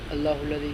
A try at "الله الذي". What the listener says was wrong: تھوڑا سا لمبا کر لے اللہ کو.